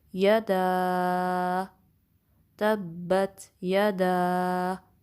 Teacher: دا کی فتحہ کے بعد الف مدہ ہے، اس میں مد منفصل ہے، اس کی 3 to 4 کاؤنٹس ہوں گی۔